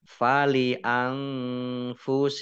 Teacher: Nun sukun bertemu dengan huruf fa juga bacaan ikhfa dibaca samar-samar. Kemudian kumnya wakof dibaca pendek tidak ada tanda panjangnya. · Kasroh tanwin bertemu dengan huruf fa bacaan ikhfa dibaca samar-samar